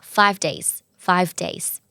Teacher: จากเสียงเVพอออกไวๆก็เป็นเสียงfเไปเลยนะคะ